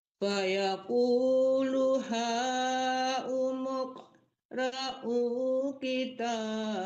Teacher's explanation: dipantulkan qofnya ya Bu itu huruf qalqalah